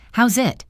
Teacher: The words how's it link together. The Z sound at the end of how's connects to it.